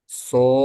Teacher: Terus ada hentakan sebelum ke kho, itu ada hentakan di so-nya sebelum ke kho.